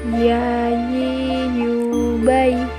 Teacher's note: Huruf ya keluar dari tengah lisan, disentuhkan dengan langit-langit.